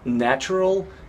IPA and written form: ˈnætʃərəl (Natural)